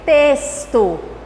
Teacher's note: Então, o T e temos o X. Quando o X vem na frente do T, a gente vai ter a pronúncia de S.